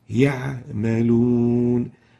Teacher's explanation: It has what we call the characteristics between tension and looseness, and the Ain accordingly should be flowing there and should be apparent. يعملون. If we really make it so tense and so short, يعملون, it would sound as if it is a Hamza.